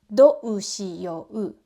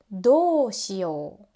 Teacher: natives often stretch one vowel sound instead of pronouncing 2 vowels separately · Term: long vowel